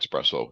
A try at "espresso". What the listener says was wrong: There's no X in espresso.